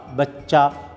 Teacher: بچہ میں بے کے بعد چے جو ہے وہ 2 مرتبہ پڑھا گیا ہے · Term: تشدید